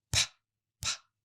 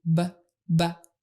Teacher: burst them apart by blowing air through them like this P it is just like the B sound except your voice is off and more air comes out · your neck if you feel it vibrate your voice is on your voice should be off for the P sound